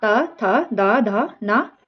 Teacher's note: जिसका उच्चारण ऊपर के दांतों पर जीभ लगने से होता है उसे क्या कहते हैं उसे दंत ध्वनि कहते हैं